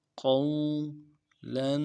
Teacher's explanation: قولا قاف کو واو کے ساتھ ملانا ہے، واو لین ہے، قاف کو موٹا کریں گے، واو لین ہے بغیر کھینچے پڑیں گے